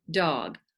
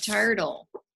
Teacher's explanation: d is voiced and t is not voiced